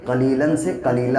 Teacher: جب 2 زبر ہوتے ہیں تو ایک زبر ہٹا کے قلیلاً سے قلیلہ ہو جاتا ہے